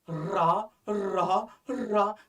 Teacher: जीभ देखो कंपन कर रही है, ऐसे लग रहा है जैसे ब्रेकर से निकल रही हो भाई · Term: प्रकंपन